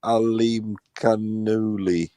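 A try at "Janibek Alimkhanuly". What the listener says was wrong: Janibek Alim Hanala. Nah, Hanala. No, there's no Kalu. It's Hanala. You don't even have to say the K. It's silent. Yeah, it's Hanala. Hanala.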